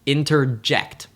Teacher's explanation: In the word interject, we don't emphasize any syllable until the last